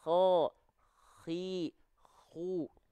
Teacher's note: kalau tepat dari ujung tenggorokan maka keluarnya seperti nafas yang ngorok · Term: huruf koho